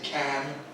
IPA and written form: kæn (can)